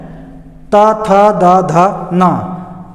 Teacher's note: वैसे ही त वर्ग में त, थ, द, ध, न, इनके उच्चारण में जीभ दांत के ऊपर वाले दांत के अंदरूनी हिस्से में को स्पर्श करती है।